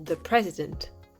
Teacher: l'accentuation est sur le début du mot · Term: l'accent tonique